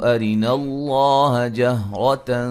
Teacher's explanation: لفظ اللہ کو خوب موٹا کریں گے، اس سے پہلے حرف پر زبر ہے